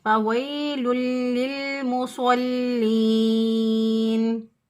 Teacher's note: ہو، لمبا نہ ہو، 6 الف سے زیادہ لمبا نہ ہو۔ نون وقف کی صورت میں ساکن ہو جائے گا